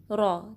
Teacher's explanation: را کو ہیوی پڑھنا ہے، اس میں تکرار آئے گی، ہلکی سی وائبریشن